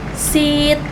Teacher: sit dengan i panjang dan ditahan, ucapkan perlahan dan panjang